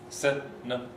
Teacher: And notice in all of these words, America's like that as well, Canada, the stress falls on the 3rd syllable from the end